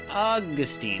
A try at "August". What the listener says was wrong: It's August. There's no N, it's just August.